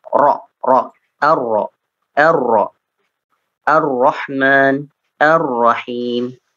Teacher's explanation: yaitu bergetarnya ujung lisan ya ketika melafalkan huruf ro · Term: sifat takrir